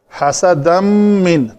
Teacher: तनवीन के बाद मीम है हरूफ यरमलून में से तो ये इसका इदगाम होगा।